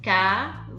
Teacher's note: Em cavalinho, a sílaba tônica, a mais forte, é o li. Então ela é paroxítona.